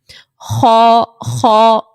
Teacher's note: پیچھے سے آواز آپ کی بھاری ہو رہی ہوگی، آواز اٹھتی ہوئی محسوس ہوگی